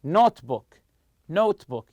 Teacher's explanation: The stress goes on the first part of the compound noun.